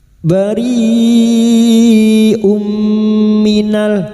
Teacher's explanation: Sekarang di sini kita wasal atau terus kita uraikan pada kalimat bari bertemu mad dengan hamzah dalam satu kalimat mad wajib mutasil 5 harakat kita panjangkan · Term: mad wajib muttasil